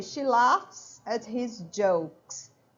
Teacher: A risada do cearense é rir, ok? So laugh or laugh, it's a voiceless sound. The last sound is like an F, ok?